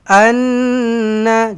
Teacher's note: Hamzah baris atas nun sabdu dengung dua harakat wajibul ghunnah.